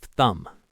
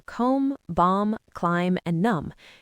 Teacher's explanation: It's much easier to just end on the M sound and not release the B. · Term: silent B